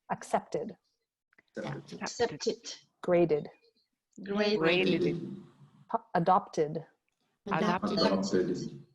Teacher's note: so these words all add a syllable with the id.